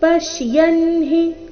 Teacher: ಈ ಶಬ್ದದಲ್ಲಿ ಪ ಮತ್ತೆ ಯ ಮೇಲೆ ಆಘಾತ ಬರಬೇಕು